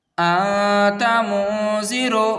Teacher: اگر ان سے پہلے کوئی تنوین یا نون ساکین آ جاتا ہے تو ہماری آواز دب جاتی ہے اور وہ ناک سے چھپ کر نکلتی ہے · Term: اخفا